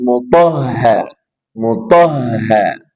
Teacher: ada ha bertasydid maka ada nabr penekanan